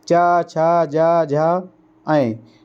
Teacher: जीभ का मध्य भाग तालु को स्पर्श करता है, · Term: तालव व्यंजन